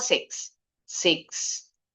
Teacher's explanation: Kalau yang suku kata terakhirnya teen, ini intonasinya tingginya di kata teen.